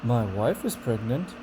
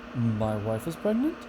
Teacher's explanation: Uncertainty is weak, and disbelief is a strong one. It has bigger jumps.